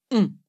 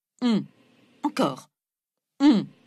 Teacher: La langue se recule et le voile du palais, le vélum, s'abaisse, ce qui fait passer une partie de l'air par le nez, tandis que le reste continue de passer par la bouche. Mettez un doigt sous les narines, comme ça, et vous devez sentir l'air sur le doigt. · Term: voyelle nasale